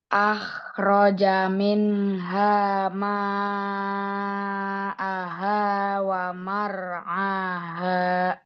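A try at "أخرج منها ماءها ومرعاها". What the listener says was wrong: Ya, kurang bergetar kho-nya itu. Coba lagi. Ya, coba kho.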